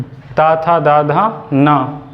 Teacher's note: उसके बाद दांत आते हैं, जो हमने बताया यहाँ पे। तो ता था दा धा ना का उच्चारण कहाँ से होता है? दंत से।